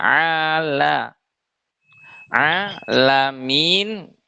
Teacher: La dibacanya tipis. Jangan la tapi la. Dibuka mulutnya.